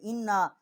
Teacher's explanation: چھوٹی مد ہے، 3 الف جتنا آواز بلند کیا ہے، انا حمزہ کو نون کے ساتھ مشدد کیا ہے اور یہاں غنہ کیا ہے